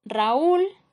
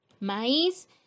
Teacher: Siguientes ejemplos: Raúl, esta palabra tiene dos sílabas, la U es una vocal débil, pero como se colocó un acento se convierte en fuerte, por lo tanto se separan y están formando sílabas separadas, es un hiato.